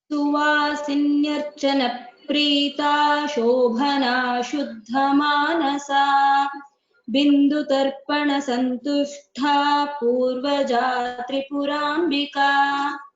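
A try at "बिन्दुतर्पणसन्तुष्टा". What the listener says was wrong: Here there is no Mahaprana in Santushta. It's not there. It's just Santushta. Ta. This is the ta is Alpa Prana.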